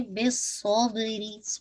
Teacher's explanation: बा पे कलकला, री की कसरा बारीक रखिएगा